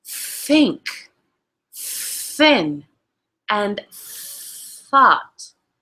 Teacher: By putting the tongue between the front teeth and touching the index finger. These are known as dental fricatives.